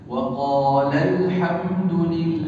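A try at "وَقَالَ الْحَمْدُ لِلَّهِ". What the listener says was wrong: Agak ditekan, ya. Tidak dibaca panjang begini. Wa qalal lal, enggak dilandaikan apa? Enggak. Tapi apa? Ditekan. Lal. Untuk menunjukkan bahwa ada huruf yang dihilangkan di dalam pelafalannya. Nah, cara menekan ini, tekan suaranya. La, ya. Bukan wa qalal tidak.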